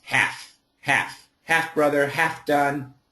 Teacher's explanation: in America when we say half like half a mile or half halfway finished uh don't worry about the L just get rid of the L and think of it as two FS half half half brother